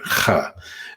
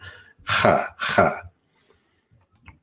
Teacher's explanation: it's a h sound, kind of back in the back of your throat. H. If you have a cold or something, you should feel some pain there because it's tickling that part of the back of your mouth there. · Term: glottalized kind of sound